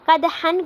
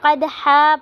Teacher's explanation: اس پہ وقف کرتے ہوئے ایک زبر کو پڑھیں گے، دو زبر کو نہیں پڑھیں گے